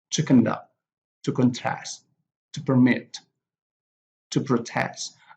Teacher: so the stress here are on the second syllable